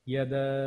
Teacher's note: এখানে দা এর মধ্যে আমাদের মাদের হরফ আছে, সাথে আমাদের এখানে 3 আলিফের চিহ্ন আছে। তো এখানে আমরা 3 আলিফ টেনে পড়ব।